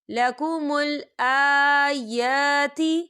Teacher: آیا کھڑی حرکات ہے، تو اسے ہم 2 حرکت کی برابر کھینچیں گے